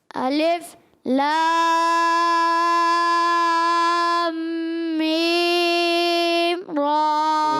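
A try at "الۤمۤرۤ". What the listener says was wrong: نہیں، آپ نے غنہ پورا نہیں کیا. تو آپ نے غنہ پورا کرنا ہے.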